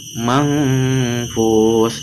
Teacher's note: nun mati bertemu fa maka diikhfakan yaitu dengan menyamarkan huruf nun. Manfus, dibaca 2 ketukan.